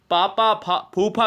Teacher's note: कहोगे तो ओठ से कहोगे